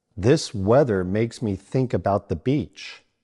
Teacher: This, weather, and the use the voiced th, and think uses the unvoiced th.